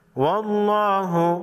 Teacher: لفظ اللہ سے پہلے حرف واو پر زبر ہے، موٹا پڑھیں گے لفظ اللہ کو